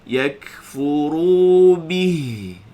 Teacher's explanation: Jadi ha tu sukun, bunyi ha kat sini pangkal halqum